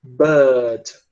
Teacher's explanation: Eu peguei esse R e eu tirei o R da pronúncia. É como se eu tivesse engolido o som do R. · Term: não rótico